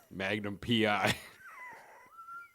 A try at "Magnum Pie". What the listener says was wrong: No, it's not pronounced P.I. It's pronounced pie. Magnum Pie.